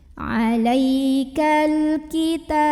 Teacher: alif lam qamariyah karena alif lamnya ketemu huruf qamariyah yaitu kaf, maka lamnya kita bunyikan dengan jelas. · Ta mad asli atau mad tabi'i karena ada baris fathah tegak di atas huruf ta, maka bacanya panjang 2 harokat.